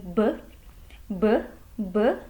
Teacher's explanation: bunyi b atau ba itu kita bisa merasakan adanya getaran pita suara ketika membunyikan bunyi tersebut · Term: bunyi bersuara